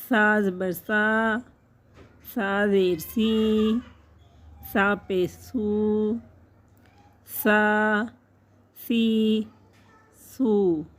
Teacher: نرمی سے پڑھیں گے، سیٹی کی آواز نہیں نکالنی